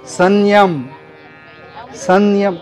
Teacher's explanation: अनुस्वाराचा उच्चार जो आहे ना तो असा होतो तर य च्या य ला जोडून य सारखा नाकातून उच्चार म्हणजे अनुनासिक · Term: अनुनासिक उच्चार